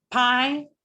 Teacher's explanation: the stop is in my lips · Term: stops